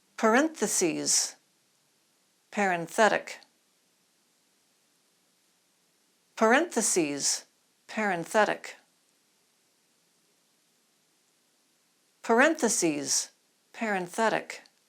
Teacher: you'll feel a little explosion in parentheses you don't feel it in parenthetic